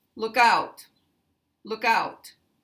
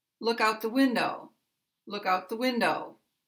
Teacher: So even though out follows look, in this sentence, the stress is on the one-word verb look